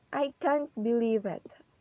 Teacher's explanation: So in the word can't, the pitch of our voice is goes up, and then in the word believe, our voice is goes down.